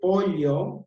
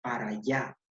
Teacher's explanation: a ese fenómeno de la sustitución de la doble L por la Y se le conoce como yeísmo